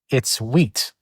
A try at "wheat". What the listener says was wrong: Dude, this isn't Spanish. We pronounce the H's.